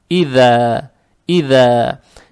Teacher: Далее стоит буква дал, она межзубная